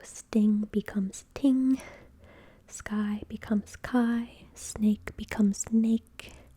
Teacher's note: it is very common for children to delete an S sound in a consonant cluster. It's not because a child cannot pronounce an an S as we see in soup, but an S plus another consonant may be difficult for a child to produce. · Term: consonant cluster reduction